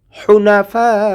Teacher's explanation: হুনাফা ফা চার আলিফ টেনে পড়ব।